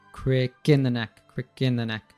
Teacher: So we just have crick and neck that we're emphasizing.